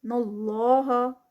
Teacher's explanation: اللہ کا نام اور اس سے پہلے زبر ہیوی ادا ہوگا